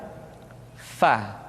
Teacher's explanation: Berikutnya pengucapan huruf fa diucapkan dengan menyentuhkan ujung dua gigi seri kita bagian atas dengan bibir bawah bagian dalam